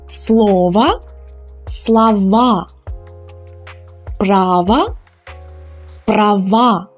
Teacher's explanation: when we change them into the plural form the ending becomes stressed and it becomes ah now it's a strong ah so it's the real sound ah